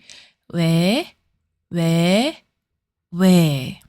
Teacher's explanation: To pronounce it, round your lips like ㅗ, but make a sound similar to ㅔ. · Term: ㅚ